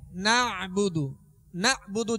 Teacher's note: ایاک نعبد، نعبد اب عین ہے اس میں، نعبد، نعبد جھٹکا دے کر حمزہ کی آواز نہ آئے بلکہ عین پڑھنا ہے. نعبد، نعبد.